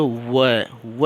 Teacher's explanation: दांत और ओठ से आवाज़ होती है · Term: दंत्योष्ठ